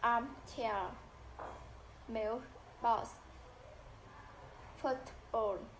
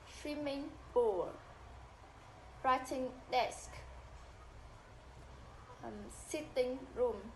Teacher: Primary stress falls on the first component, the first word, even if two words are written separately. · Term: main stress on first part